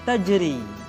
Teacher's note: ro dibaca tipis ketika dia berharakat kasrah · Ra dibaca tipis ketika dia berharakat kasrah, tajri. Atau ra sukun didahului oleh huruf yang berharakat kasrah.